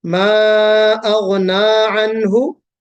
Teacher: بہت لمبا نہیں کھینچیں گے، مد نہیں ہے، لیکن جس کو ہم مد اصلی یا مد طبعی کہتے ہیں، دو حرکت کے برابر ، یعنی تھوڑا سا کھینچنا، تو اتنا کھینچا جائے گا، ما